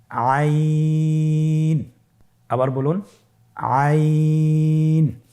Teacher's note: আইন হরফটি কণ্ঠনালীর মধ্যখান থেকে উচ্চারিত হয়।